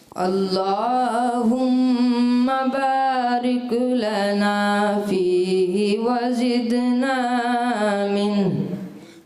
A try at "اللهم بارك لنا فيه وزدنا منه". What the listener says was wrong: اچھا باریک, ریک کلکلا نہیں کرنا, بارک لنا. اللہم بارک لنا, بارک لنا.